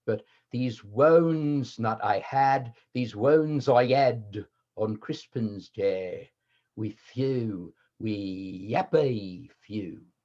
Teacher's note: And then you also have some H drops, like you have in Cockney and other regional UK accents. The H drops at least occurred in the earlier years of Shakespeare's career, and the H started coming in toward the end.